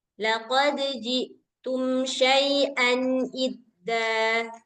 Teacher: Jangan ada penekanan di ujung nanti kayak suara Hamzah. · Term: izhar